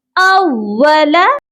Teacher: अव्वला, हमज़ा वाओ ज़बर औ, हमज़ा को वाओ के साथ सख्ती से मिलाकर पढ़ा जाएगा